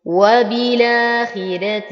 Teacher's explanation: أيضا لدي بهذه الكلمة الراء المفتوحة وقبلها كسر، ولورش انفراد فيها وهو الترقيق، ويرقق ورش كل راء مفتوحة أو مضمومة إذا وقعت بعد كسر أو ياء ساكنة، وهذه أيضا من انفرادات ورش واختلافاته عن حفص. إذن الراء هنا مرققة رغم أنها مفتوحة، لكن ما قبلها حرف مكسور فالكسر يقودنا للترقيق